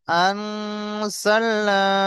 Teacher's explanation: তো যা আসার কারণে এখানে আমরা কি হবে, এক আলিফ পরিমাণ গুণনা করে পড়তে হবে